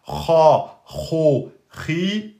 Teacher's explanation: c'était une lettre de la gorge, qui est tout en haut de la gorge